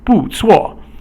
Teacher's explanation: 不 错 is both a falling tone, so that's the fourth tone.